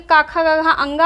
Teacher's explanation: तो काखा गाघा अंगा का जो उच्चारण होता है कंठ से होता है और साथ में हा का उच्चारण भी कंठ से होता है।